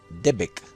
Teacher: Ahí tenemos nuestra famosa vocal schwa, esa vocal corta neutra, que no es una E, es una vocal apenas pronunciada para unir las consonantes